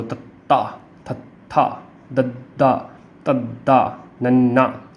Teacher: ਜਿਹੜੀ ਜੀਭ ਆ ਸਾਡੀ ਉਹ ਦੰਦਾਂ ਨੂੰ ਟੱਚ ਕਰਦੀ ਆ, ਦੰਦਾਂ ਨੂੰ ਛੂਹੰਦੀ ਆ, ਇਸ ਕਰਕੇ ਤਵਰਗ ਨੂੰ ਦੰਤੀ ਧੁਨੀਆਂ ਵੀ ਕਿਹਾ ਜਾਂਦਾ।